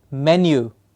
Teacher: these are fused vowel sounds. Two sounds come together